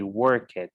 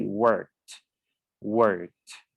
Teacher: The last sound of this verb is a voiceless sound. So the pronunciation of the past is going to be as a t sound at the end, replacing the ed, right? So remember that it is a big, huge mistake to say work it.